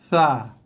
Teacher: Sekali lagi, parking dulu lidah, tarik dalam sikit, sebut huruf, dia akan bersamanya keluar dengan sedikit hembusan nafas. Ada hembusan nafas yang keluar bersama dengan sebutan huruf yang keempat ni.